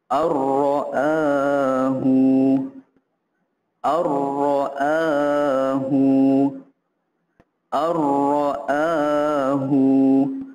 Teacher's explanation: huruf nun ini kita terus masuk ke dalam huruf ro tanpa kita bunyikan dengung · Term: idgham bilagunnah